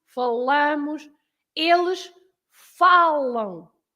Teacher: You have to stress falam.